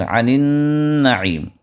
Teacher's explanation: نون پہ شدہ آیا ہے، تو اب یہ نون مشددہ تو ادغام مع الغنہ کے اعتبار سے 2 حرکت تک نون کو دبا کر ہم پڑھیں گے